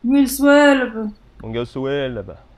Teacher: that B at the end is actually pronounced a little bit more with force. So let's just do it again.